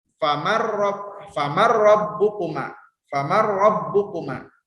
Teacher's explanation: Terus untuk ro famar rabbukuma. Jadi tidak mendengung, sama sekali tidak mendengung. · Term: idgham bila guna